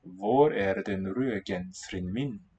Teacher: even though it's between vowels, the D is still silent